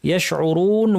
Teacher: শিন জিহ্বার মাঝখান থেকে আওয়াজটা ছড়িয়ে পড়বে, এর বৈশিষ্ট্যের নাম তাফাশি, এর কারণে একটা স্ট্রং আওয়াজ শোনা যাবে।